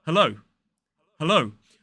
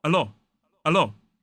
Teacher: they were pronouncing that last diphthong, the O diphthong, as more like a O, the Italian O